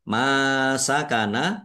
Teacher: mim fathah alif mad thobi'i panjang dua harakat